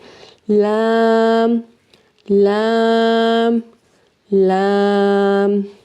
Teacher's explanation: जुबान का जो किनारा है उसको अपने सनाया उलिया के साथ वाले दांतों के साथ लगाना है यहां पे। तो फिर यहां पे लगा के हम लाम को भी अदा करेंगे।